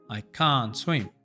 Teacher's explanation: Al hablar el inglés de forma fluida, vamos a quitar el sonido T cuando está entre dos consonantes.